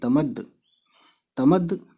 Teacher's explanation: چھوٹی یہ کی، تے زبر تا، میم زبر ما، تمد، اور دال پہ تشدید ہے تو دال کی آواز 2 بار نکالیں گے تو دیکھیے تمد، تمد، پھر دال پہ پیش ہے اور نون